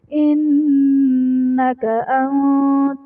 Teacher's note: انت میں نون ساکن کے بعد حروف اخفا میں سے تا ہے تو یہاں پر اخفا کا قاعدہ ہوگا، یعنی نون ساکن میں ہم غنہ کر کے پڑھیں گے